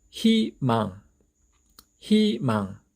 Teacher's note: 이럴 때는 이 이중 모음이 가지고 있는 원래의 발음 의 대신에 발음을 편리하게 할 수 있도록 이로 발음하기로 약속을 했습니다